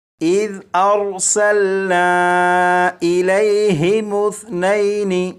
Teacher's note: سا کو نرمی سے پڑھیں گے، یعنی سی ٹی کی آواز کے بغیر پڑھیں گے